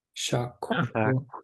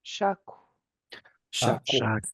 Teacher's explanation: I can hear that you're rounding your lips when you breathe out that K, and that's perfect.